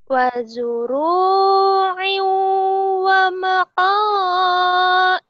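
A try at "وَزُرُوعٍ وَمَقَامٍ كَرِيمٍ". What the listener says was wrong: Es wa maqamin. Ini bukan hamzah. Ini mim. Wa maqamin, wa maqamin.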